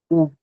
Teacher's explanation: O U ele é mais arredondado, ele é arredondado. O i não.